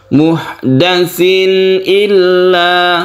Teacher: dengan Hamzah ini kita sebut dengan izhar lengkapnya adalah izhar halqi halqi artinya tenggorokan karena Hamzah itu makhrajnya ditenggorokan kita baca jelas terang dan tidak berdengung itu sifat izhar illu